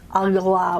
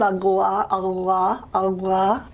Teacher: it really does seem to be more of a agla type sound, agla, with a proper stop beforehand.